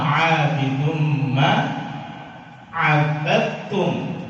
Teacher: Abad itu sudah tidak ada dalnya sama sekali. Kalau kita masih membaca dal di situ, maka kita tidak mengidghamkan secara total.